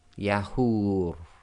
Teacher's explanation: Yahur. And again, the ra will go sakin, so the dummah-waaw long vowel sound can go 2, 4 or 6 long